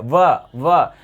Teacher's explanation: दांत और ओष्ठ का मिलन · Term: दंतोष्